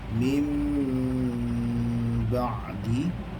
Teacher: Bila bertemu dengan huruf ba, dibaca dengung dua harakat. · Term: ikhfa syafawi